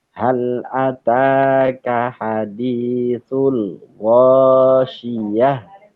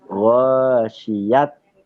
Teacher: jadi hak besar, jadi hak yang ada di tenggorokan bagian bawah, bukan ghasyiyat.